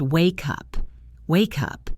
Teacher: When you say wake up, the K sound travels over to the U. It becomes wake up. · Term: link words